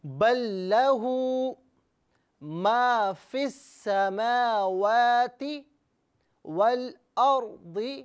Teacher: یہاں پر یاد رہے کہ فی کو السماوات سے علیحدہ پڑھیں تو ناظرین یہاں پر حمزہ پر زبر ہوگا اور اسے السماواتی پڑھیں گے، لیکن فی کو ملا کر پڑھیں گے تو فا کو سین کے ساتھ ملائیں گے اور حمزہ کو درمیان سے حذف کر دیا جائے گا، حمزہ کو نہیں پڑھا جائے گا۔